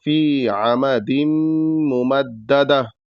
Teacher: دال کے تنوین کو میم مشدد میں ملائیں گے تو یہاں غنہ ہوگا